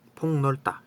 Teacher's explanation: 폭에서 이제 일단 기역이 니은을 만나가지고 비음화가 되죠. 기역이 니은을 만나서 퐁으로 바뀝니다.